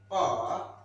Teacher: while producing sound pa, there is no vibration in the vocal cord, that is why it is voiceless.